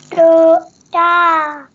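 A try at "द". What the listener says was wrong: Da. It is da. Da for daya. It's become dha. Da. This one is dha.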